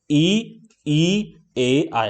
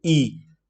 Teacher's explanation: जिन स्वरों के उच्चारण में जीभ का अग्र भाग काम करता है उन्हें अग्र स्वर कहते हैं